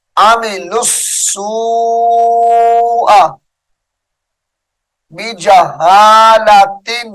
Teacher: لام کو سین مشدد کے ساتھ ملا کر لمبا کر کے پڑھیں گے